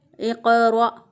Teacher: इक़रा, क़ाफ जो है इसको उसी तरह पूर्व पढ़ा और इसको हिलाकर पढ़ा, इस पर कलकला करते हुए अदा किया। इक़रा, और रा जो है इसको मोटा अदा किया और आगे हमज़ा जो है इसको झटके के साथ अदा किया।